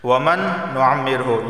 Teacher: نون ساکن کے بعد نون آیا ہے، ادغام اور غنہ دونوں ہوں گے